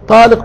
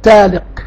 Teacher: كانت زمان يعني بعض الفئات تنطق الطاء تاء فلما مثلا تقول انت بدل ما تقول طالق تقول ايه تالق فبعض الفقهاء في ذلك العصر القديم موجود في الكتب القديمة إذا قال ذلك يسأل هل أنت تقصد بهذا الطلاق أو لا تقصد يسأل عن نيته ده البحث هو ده ملخص البحث.